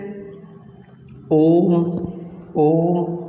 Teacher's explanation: प्लुप्त स्वर, इनमें 3 मात्रा का समय लगता है